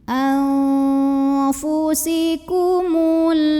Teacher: Karena ada nun sukun yang ketemu dengan huruf fa. Maka nun sukun ini kita bunyikan samar-samar, siap-siap mau bilang fa, disertai dengungan. Nah, ini dengung samar sama seimbang. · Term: ikhfa awsat